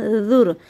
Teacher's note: دونوں دانتوں کے درمیان میں زبان کریں گے تو آپ کا ذال نکلے گا